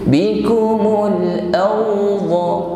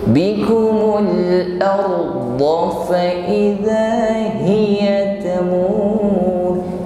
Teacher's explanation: di sini kita baca tafkhim, tetap takrir, ra-nya bergetar namun getarannya tebal. Jangan sampai takrir atau getaran lidah ini menjadi hilang, seolah-olah suaranya menjadi pelak.